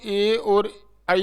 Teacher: तो ये दोनों ए और आई है जो कंठ तालव्य वर्ग में है। तो अलग अलग इनका जो उच्चारण स्थल इसका अलग अलग है।